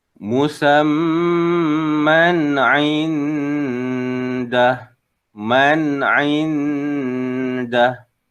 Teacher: Maka hukumnya adalah izhar. Izhar baca dengan jelas, dengan nyata, tanpa dengung.